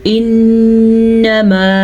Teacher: نون ساکن، نون کے اوپر شد ہے تو نون کا غنہ ادا کریں گے